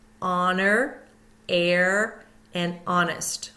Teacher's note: h at the beginning of a word honor air and honest we go right to the vowel sound don't hear the H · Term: silent h